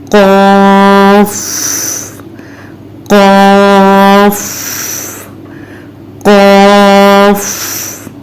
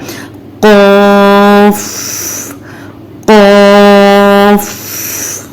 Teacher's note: जबान की जड़ ऊपर तालो के नरम हिस्से से लगती है और जबान के आखरी हिस्से को हम ऊपर की तरफ बुलंद भी करते हैं और ऊपर तालू के नरम हिस्से से अच्छी तरह लगाकर मोटी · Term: मोटा हर्फ